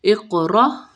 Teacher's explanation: اق میں قاف ساکن ہے قاف پہ قلقلہ ہوگا را کو موٹا پڑا جائیں گے اقرا حمزہ زبر را فار